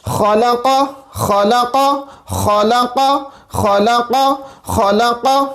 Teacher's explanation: Next example, خا زبر خا، لام زبر لا، قاف زبر قا، خلق خا. خا ہمارے پاس ادنا حلق سے ادا ہوتا ہے، یعنی حلق کا وہ حصہ جو کہ منہ کی طرف ہے